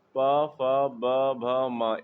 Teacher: प वर्ग प फ ब भ म इसका उच्चारण स्थान क्या है? ओष्ठ है। और फिर अल्पप्राण और महाप्राण इसे वायु के आधार पर बांटा गया है।